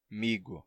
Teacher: por exemplo a gente perde a nasalidade do final e também o som de c como tá entre duas vogais termina se sonorizando em G porque a diferença de C para G é só que o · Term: sonorização